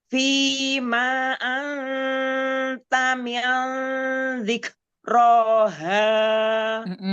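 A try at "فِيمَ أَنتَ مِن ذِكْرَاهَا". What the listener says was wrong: Coba diulang, maknya jangan panjang. Fima anta. Jangan panjang.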